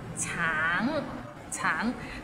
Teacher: Tang, it means orange, but some people might find it difficult because the end has a little ng, so it's a bit of nasal sound